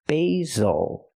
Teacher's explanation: use the long a sound for the first syllable like say and day B basil the S makes the ZZ sound like zebra make